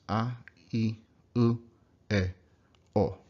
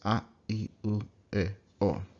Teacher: Really short. Don't glide like o or u or I. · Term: 5 vowels